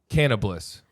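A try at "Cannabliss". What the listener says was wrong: Can-o-bliss. You said it sounded like you said cannibalist. Can-o-bliss.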